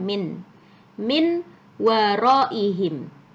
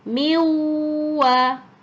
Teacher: Nun nya dihilangkan jadi nunnya tidak terdengar lagi suaranya langsung masuk ke WA jadi seolah-olah di atasnya wa ini ada tasdidnya Jadi cara bacanya